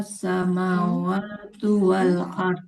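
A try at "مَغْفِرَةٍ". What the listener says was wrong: Yang pertama huruf ghainnya belum mengalir suaranya. Maghfiratim. Maghfirah.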